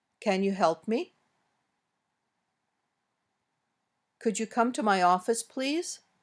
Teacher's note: Some requests are in the form of a question. These usually go up at the end, as most yes/no questions do.